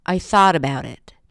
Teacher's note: Thought is the focus word.